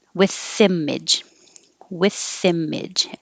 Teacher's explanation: With image, the TH connects to the I